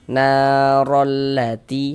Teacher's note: maka huruf yang memiliki harokat fathah dibaca panjang seperti itu. Sehingganya dibaca panjang. Mad tabi'i panjang 2 harokat.